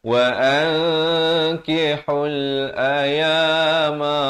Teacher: nun mati yang tak ada tanda mati asli bertemu kaf, itu namanya ikhfa hakiki, kena samar 2 harakat